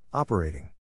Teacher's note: To pronounce operating, have in mind that the size of the syllable indicates where the accent or stress is. In this case, the accent is in the first syllable, corresponding to op.